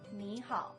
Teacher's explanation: when I said nihao, the ni turned into a second tone, ni. Why is that?